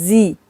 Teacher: زا میں سیٹی آئے گی